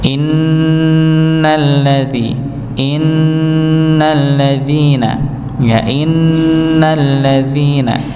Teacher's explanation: Kalau huruf nun sukun ketemu ya, maka keluarnya hidung dengan mulut. Sedangkan nun yang bertasydid, maka dia keluar dari hidung. Innalladzi innalladzina ya innalladzina maka di didengungkan pada nun yang bertasydid ya.